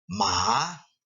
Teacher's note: Ma rises then falls